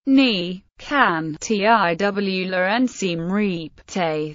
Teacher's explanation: fold-out interrogative similar to yes/no questions in English fold-out interrogatives remain fairly even in tone throughout but rise sharply towards the end